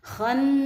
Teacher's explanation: Nah nunnya bertasydid dibaca gunnah.